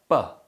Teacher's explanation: this sound is produced by building up air pressure behind the lips and releasing it explosively while simultaneously producing a sound from the back of the throat this gives the sound its technical name the voiced bilabial plosive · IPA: /b/